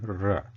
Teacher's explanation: So it will be sounding like r, r, r. While pronouncing refa, the tip will be pointing towards murdha